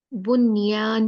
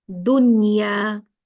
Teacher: नून के बाद यर मलून में से या आया है लेकिन हम यहां बनियान पढ़ेंगे नून को क्लियर पढ़ेंगे इजहार करेंगे नून का